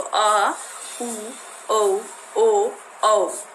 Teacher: पश्च स्वर यानी कि जीभ का पीछे वाला हिस्सा। जिन स्वरों के उच्चारण में जीभ का पीछे वाला हिस्सा काम करता है तो उसको पश्च स्वर कहते हैं